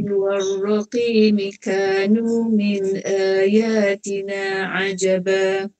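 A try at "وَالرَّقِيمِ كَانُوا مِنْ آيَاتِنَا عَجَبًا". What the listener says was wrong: Ibu tak boleh kanu tu ibu jarakkan bacaan ibu. Kanu tak nak macam tu. Sampai di pada warraqi, berarti ibu sambungkan gitu ya.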